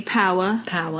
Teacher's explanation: the avoidance of the final and middle r